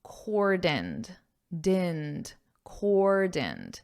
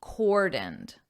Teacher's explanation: So the emphasis is on the first syllable, core, and then the second syllable is unstressed